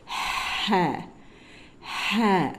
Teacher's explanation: எழுதி இருப்போம் ஆனா இங்க எந்த புள்ளியும் இருக்காது இது வந்து ஹ தொண்டையிலிருந்து நடு தொண்டையிலிருந்து அப்படியே அந்த ஓபனான ஒரு இடத்துல வரும் அதாவது நடு தொண்டையிலிருந்து இந்த இதை உச்சரிப்போம் நடு தொண்டையிலிருந்து வெற்றிடம் இருக்கு இல்லையா